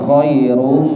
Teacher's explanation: khairu nya tebal karena dhamma. Khairum. Terus mim tasdid niku gunnah ditahan.